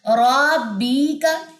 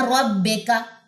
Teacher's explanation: ربی کا یا ربے کا، بے کا نہیں اس کو پڑھنا، بی کا پڑھنا، یعنی کہ آپ نے زیر کو ای سمجھنا ہے انگلش کا